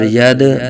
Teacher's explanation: دال ساکن میں قلقلہ ہوگا، خوب ظاہر کریں گے